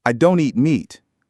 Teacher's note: Do not becomes don't. And I don't eat meat would have the stress on don't and meat.